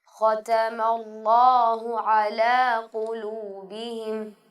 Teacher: اللہ کا لام سب سے موٹا پڑھا جانے والا حرف ہے